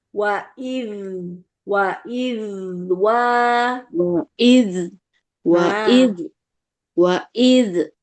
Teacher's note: dialirkan jadi ada anginnya beda sama dal yang qalqalah